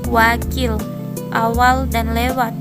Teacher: Semivokal, yaitu semivokal biladial, terjadi jika artikulator aktif bibir bawah dan artikulator pasif bibir atas. W.